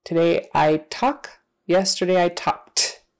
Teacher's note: an unvoiced consonant like K as in I talk talk then we're going to pronounce that Ed with an unvoiced consonant like T